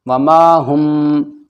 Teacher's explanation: ساکن کے بعد با آ گیا تو کیا ہوگا یہاں پر اخفاء شفوی یعنی ناک میں آواز لے جانی ہے